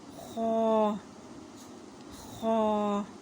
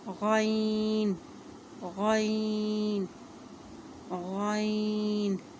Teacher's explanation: حلق کے اس حصے سے ادا ہو رہا ہے جو منہ کی جانب ہے